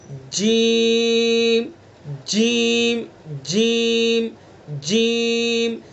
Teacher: ज़बान के बीच को ऊपर के तालु पर लगाएंगे तो जीम अदा हो जाएगा।